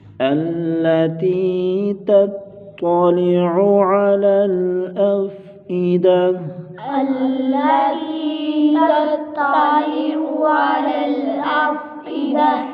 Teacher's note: پڑھیں گے، تطلع، طا کو موٹا مستعلیہ کا حرف، عین کو گلے سے نکالیں گے، دونوں عینوں کو